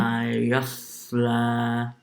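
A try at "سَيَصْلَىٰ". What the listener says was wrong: You're making the ya slightly full mouth. Sayasla.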